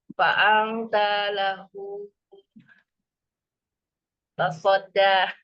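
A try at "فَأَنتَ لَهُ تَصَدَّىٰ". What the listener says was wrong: Mintanya satu harokat. Antanya satu harokat. punya dua harokat, masilah kosiroh.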